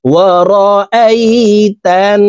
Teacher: হরকতের বামে নুনের উপরে তাসদিদ আছে, এই কারণে এই তা তাসদিদওয়ালা নুনের সাথে নাকের বাসি থেকে 3 সেকেন্ড পরিমাণ গুন্নাহ করে ধরে রেখে পড়ব।